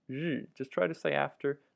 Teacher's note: Yu, really difficult sound. Fourth tone can mean sun or day.